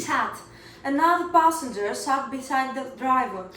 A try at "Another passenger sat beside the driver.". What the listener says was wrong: Great, but your A in passenger wasn't a smiley. Focus on one thing at a time. Focus on one thing at a time. So try to think of the word you're saying, not the one after that, because this will really mess up and trip you up.